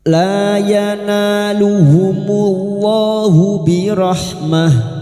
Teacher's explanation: Lam alif 2 harakat kita panjangkan, yana fathah diikuti alif, na 2 harakat kita panjangkan matabi'i. Yanaluhumullahu lam jalalah yang didahului dhammah. Kita baca tafkim.